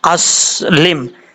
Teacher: سین جو ہے وہ سیٹی کے ساتھ پڑھا جاتا ہے، بغیر سیٹی کے نہیں پڑھنا، کیونکہ یہ حروف صفیریہ میں سے ہے۔